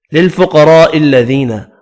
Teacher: للفقراء الذين، قاف پر پڑھیں گے، را بھی زبر کی وجہ سے پر پڑھا جائے گا، بڑی مد کو 5 الف کی مقدار میں کھینچ کر پڑھیں گے، یا مدہ کو 1 الف کی مقدار میں کھینچ کر پڑھنا ہے.